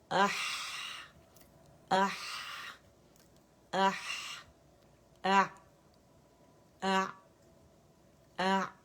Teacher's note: ہا کے لیے تھوڑا سا پیچھے سپیس ہوتا ہے کیونکہ ہا وائسس لیٹر ہے تو ہوا کراس ہوتی ہے, تو ہا کی آواز اح اح اح اح اح اح, ٹھیک ہے.